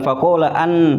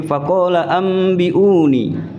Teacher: Itu nun sukunya berubah dibaca menjadi mim.